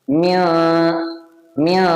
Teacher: ആ നൂനിനെ മഹ്റജിന്റെ അടുത്ത് വരെ നാ കൊണ്ടുപോവുക എന്നിട്ട് മണിക്കാം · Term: ഇഹ്ഫാഹ്